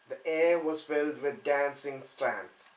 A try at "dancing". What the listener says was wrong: No, no. We're looking for an R, not an A. An R sound.